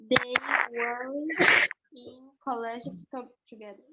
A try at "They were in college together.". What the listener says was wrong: That's right. They were in college together. Very good.